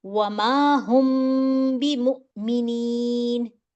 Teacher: ٹھیک ہے, ہونٹوں تو چھپانا کہاں ہے مجھے, با کو میں نے با جو ہے وہ جب میم ساکنہ کے بعد حرف با آ جاتا ہے تو اس میں مجھے اخفاء کرنا ہے. تو ہم جو میرا میم ساکنہ ہے اس کو میں نے اپنے ہونٹوں کے درمیان میں چھپانا ہے, تھوڑی دیر کے لیے رکھنا ہے. ٹھیک ہے, غنہ نہیں کروں گی لیکن میں اس کو چھپاؤں گی, تھوڑی دیر کے لیے اپنے ہونٹوں میں ٹھہراؤں گی آواز کو 2 سیکنڈ کے لیے.